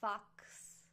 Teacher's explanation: X like in Fox which is basically a K and then an S sound